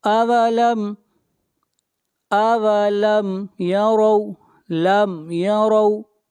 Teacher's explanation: اولم یروا لم یروا، میم ساکن کے بعد نہ میم ہے اور نہ با ہے، اس لیے یہاں پر اظہار شفوی کریں گے اور را کو موٹا پڑھیں گے اور را کے اوپر زبر ہے